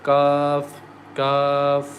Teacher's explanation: Ya comes from the middle of the tongue, and kaf comes from the root of the tongue